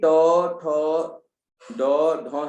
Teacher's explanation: च, छ, ज, झ है, इसमें सिर्फ तालव्य, ये तालव्य है, इसमें तालु से आवाज निकल रही है और कहीं से आवाज नहीं निकल रही। ऐसे ही ट, ठ, ड, ढ है, इसमें आप देखिए मूर्धा से आवाज निकल रही है